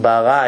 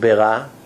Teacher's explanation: big difference between the kamats and the schwa